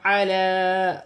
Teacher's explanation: لام پر کھڑی زبر بھی ہے اور چھوٹی مد بھی ہے، مد منفصل، اسے 3 الف کی مقدار تک کھینچ کر پڑھا جائے گا